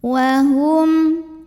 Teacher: Hum ada izhar syafawi karena ada mim sukun yang ketemu dengan huruf selain mim dan ba, yaitu huruf lam. Maka cara bacanya mim sukun ini dibaca izhar atau jelas.